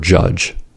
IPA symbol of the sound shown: dʒ